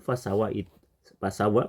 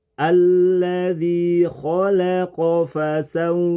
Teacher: pengucapan fasawa menurut aturan tajwid itu tanpa disertai gunah